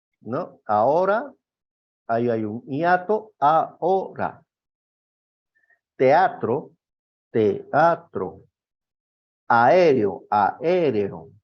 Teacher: Estamos hablando de sílabas diferentes. Una segunda secuencia del hiato. Las vocales abiertas distintas. O sea, una A con una E.